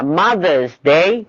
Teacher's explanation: Mother's Day is a compound word تعتبر كلمة واحدة وتاخد الستريس على mothers لانها this is the normal stress على الكومباوند.